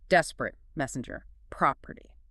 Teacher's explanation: one stressed followed by two unstressed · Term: dactyl